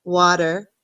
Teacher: like this, and then ter at the end, or like my daughter likes to say der, water. Sometimes you will hear Americans not say that T, and it sounds more like a D